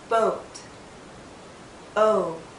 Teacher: this is another long vowel sound Oh our lips are very rounded but it's more open